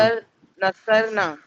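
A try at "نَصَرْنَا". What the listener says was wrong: नसरना। थोड़ा ना घसीटना है।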